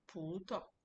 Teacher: The pu is stretched because there is a tone. The tao is short because the tao doesn't have the tone. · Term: neutral word